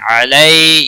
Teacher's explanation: یا لین ہے تھوڑا نرمی کے ساتھ کھینچ کر پڑھیں گے